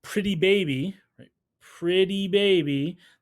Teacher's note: from a phonological perspective the words roll right into each other